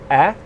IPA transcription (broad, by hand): e